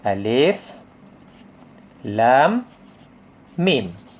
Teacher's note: Mim mati, jumpa mim. Jadi dia masukkan, sini ada dengung.